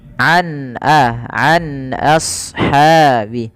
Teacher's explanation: ada bacaan yang dikenal-kenal dengan bacaan izhar halqi yang di mana huruf nunnya suaranya terdengar dengan jelas sama sekali tidak ada penahanan